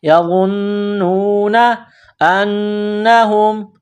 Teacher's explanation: نون میں غنہ کرنا ہے، آواز ناک میں چھپانی ہے